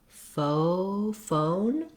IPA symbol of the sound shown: oʊ